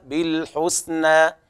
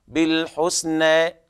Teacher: على رواية حفص تفتح الألف هكذا بالحسنى، أما على رواية ورش ففي التقليل قولا واحدا